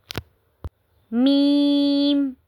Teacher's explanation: जब हम मीम पढ़ते हैं तो हमारा जो होठ हैं वह बंद हो जाते हैं और जो हमारी होठों का खुश हिस्सा है वहां से मीम अदा होता है।